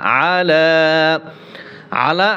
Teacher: আইন গলার ভিতরে চাপিয়ে বলতে হবে